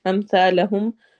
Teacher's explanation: سا کو نرمی سے پڑھنا ہے اور الف مدہ کرنا ہے